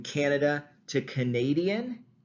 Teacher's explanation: first syllable shifts to a schwa which is a very central sound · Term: vowel reduction